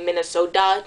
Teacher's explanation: we say our T's as more D's instead. So, that's why we say Minnesota, not instead of Minnesota.